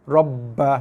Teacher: sabdu atas ba tak perlu dengung, tak boleh dengung pun. Tekan pada ba dan lepas.